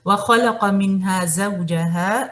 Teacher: زو آپ کا مدلین ہے، زوجہ نہیں پڑھنا ہے اسے